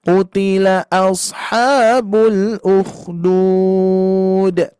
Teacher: Ujungnya pokoknya diturunkan saja, direndahkan.